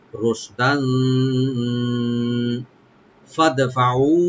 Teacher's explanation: রোশদান, দান এখানে তানবিন আছে, তানবিন আমরা এখানে ইখফা করব, yani লাইট গুণনা করব এখানে